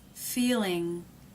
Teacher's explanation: what's going on here as the jaw is quite closed but it does look like the tongue tip is down and the tongue is raised in the back